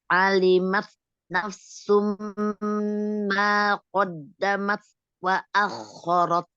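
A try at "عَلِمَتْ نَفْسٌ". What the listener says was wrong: fa-nya itu alir dulu. Alimat nafsum jangan buru-buru sin ya, nafsum.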